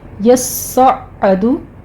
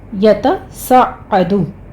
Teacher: तस्सउदुन से है, ये हमारे पास बाब तफ़ाउल से आता है और ये मुज़ारे वाहिद मुज़क्कर गायब का सीगा है और असल में ये क्या था, यतसअदु, ठीक है। तो ता को सौद से बदल कर इदगाम कर दिया गया है